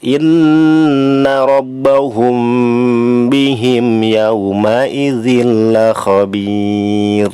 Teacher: ini termasuk harus dibaca tarkik ya, ro-nya dibaca tipis, cirinya sebelumnya ada ya sukun berharokat kasroh.